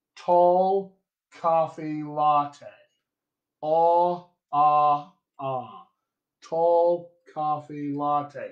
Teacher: I don't have a lot vowel typically in my accent. And I actually take this lot set of words and I smush it in with my palm words.